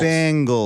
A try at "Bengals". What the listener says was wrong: you're saying bang like boom bang